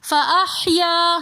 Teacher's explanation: فاحیاکم میں بھی یا کے ساتھ الف مدہ ہونے کی وجہ سے فاحیا ہم تھوڑا سا کھینچ کر پڑھیں گے۔